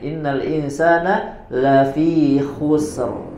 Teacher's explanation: dibaca dengan tebal karena sebelumnya ada domah